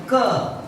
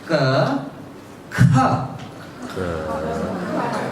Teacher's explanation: the tongue touches at the same place in the mouth, but with air thrown out.